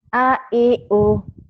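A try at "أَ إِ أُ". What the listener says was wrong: A I U. Nggak boleh yang panjang. A I U. A I U. A I U.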